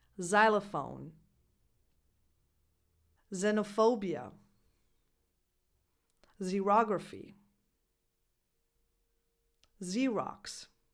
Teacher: the last sound that the letter X can have is a [z] sound and this happens when a word starts with an X.